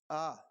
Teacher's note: आ का उच्चारण स्थान होता है कंठ से